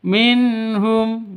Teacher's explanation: nun mati bertemu dengan ha jelas terang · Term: izhar halqi